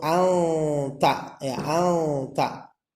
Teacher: Apabila ada nun sukun berhadapan dengan huruf ta disebutnya ikhfa hakiki, dibacanya samar-samar